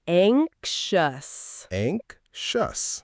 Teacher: Notice that the X sounds a bit like a K S followed by a sh sound.